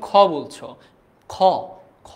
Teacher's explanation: খ খ তো উচ্চারণ করছো কণ্ঠ থেকে, কিন্তু তার সঙ্গে সঙ্গে একটা অ এর উচ্চারণ করতে হচ্ছে, অর্থাৎ কি স্বরধ্বনির সাহায্য নিতে হচ্ছে।